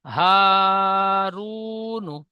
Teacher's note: ও সাকিনের ডান দিকে পেশ এসেছে একে ও মাদ্দা বলে। ও মাদ্দা এক আলিফ পরিমাণ টান দিয়ে পড়তে হয়।